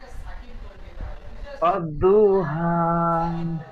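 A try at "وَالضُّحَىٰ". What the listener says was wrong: ওয়াদ্দুহা, ওয়াদ্দুহা। ওয়াওটি উচ্চারণ করেন। দু বলে টান দিচ্ছেন, টান হবে না। দত পেশ দু, ও দু,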